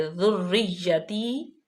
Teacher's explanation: را جو ہے وہ تشدید ہے یعنی کہ دو را ہیں ، اور را ذریتی، یا پہ بھی مشدد ہے، یا بھی